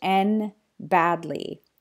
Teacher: when D comes between two consonants like the N and the B here it will just disappear